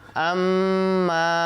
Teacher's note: এরপরে আসি আম্মা পড়তে হবে পরে দেখি হামজা মিম জবর আম গুন্না করতে হবে আম ধরে রাখতে হবে